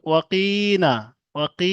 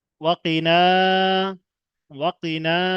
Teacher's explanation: কফের নিচে জের আছে, এটা হারাকাত, হারাকাতে পড়া, টানা যাবে না